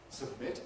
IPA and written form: səbˈmɪt (submit)